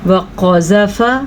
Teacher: قاف کو کیا کرنا ہے؟ موٹا کر کے پڑھنا ہے، کیونکہ قاف حروف مستعلیہ میں سے ہے